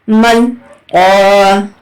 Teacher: میم لام زبر مل، قاف الف زبر قا، مل قا۔ قاف حروف مستعاریہ میں سے ہے تو آپ کو اس کو ہیوی پڑھنا ہے